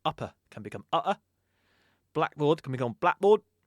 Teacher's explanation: the glottal stop actually it extends to K and P sounds as well in some cases.